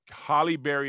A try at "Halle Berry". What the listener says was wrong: Why do you say Holly Berry when it's Halle Berry? It's Halle, not Holly. Yeah, it's Halle, not Holly. Halle. The way she spells it. H-A. There's an A in there, not a O.